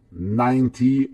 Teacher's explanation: every time you have a bigger number, the stress is on the first syllable